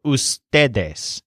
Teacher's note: a word whose stressed syllable is ste